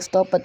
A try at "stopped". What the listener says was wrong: Jangan dibaca yang ede itu, jangan dibaca e-nya. Stop it. Jangan dibaca begitu. E-nya jangan dibaca. Stop saja.